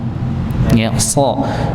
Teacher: ini so-nya dibaca tebal tapi tidak monyong, karena ini salah satu huruf yang sering dibaca monyong.